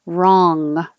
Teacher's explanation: The back of your tongue is going up and touching the top of your mouth.